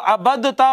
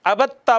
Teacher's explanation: دال کو تا میں ضم کیا تو تا ہو گئی مشدد